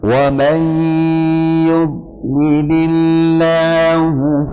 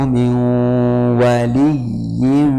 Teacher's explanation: Ketika yang awal wa may pakai dengung, pakai gunnah, tapi kan yang kedua min waliyyin tanpa dengung, tanpa gunnah. Jadi harus diperhatikan tasydid di situ sebagai tasydid idgham yang disertai gunnah atau tasydid yang asli.